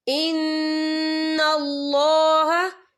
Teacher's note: إِلَّا مَا قَدْ سَلَفَ ان اللہ. ان اللہ، اللہ کا نام پر پڑھا جائے گا کیونکہ اللہ کے نام سے پہلے زبر ہے، اور یہاں پہ دیکھیں نون مشدد ہے تو یہاں پر غنہ بھی ہوگا.